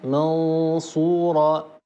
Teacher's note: طرف اللسان لا يلامس ما حذاه من اللثه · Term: اخفاء نون ساكنه